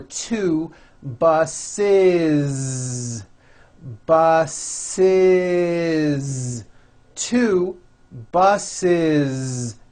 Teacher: the last sound you hear is that voiced zee